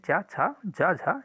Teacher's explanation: इन सभी का उच्चारण स्थान तालू है